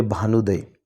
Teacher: ऊ आणि ऊ मिळून हा ऊ तयार होतो ऱ्हस्वचा दीर्घ. याचं उदाहरण म्हणून भानू आणि उदय म्हणजे भानुदय.